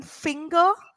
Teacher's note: n and G are two separate sounds there